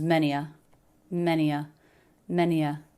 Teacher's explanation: Just the schwa linking into the end of the word.